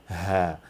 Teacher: Ha comes from the lower part of the throat or lower point of the throat, and we have to relax our throat in order to get it right.